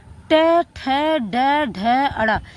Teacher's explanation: ट, ठ, ड, ढ, ण ये हमारा उच्चारण कहां से होता है? मूर्धा से होता है।